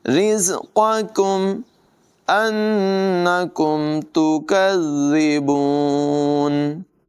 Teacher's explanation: وَتَجْعَلُونَ رِزْقَكُمْ، را کی ادائیگی بریک ہوگی، زا میں سیٹی کی آواز نمایاں ہوگی، قاف کو پر پڑھیں گے اور یہ جو ڈنڈی والا کاف ہے اسے باریک پڑھیں گے، چونکہ دونوں اکٹھے ہیں تو بڑے دھیان کے ساتھ پہلا قاف پر ہوگا، دوسرا کاف باریک ہوگا۔